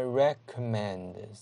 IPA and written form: .rekə'mend (recommend)